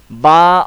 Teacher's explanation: با کے اوپر دونوں ہونٹ ملیں گے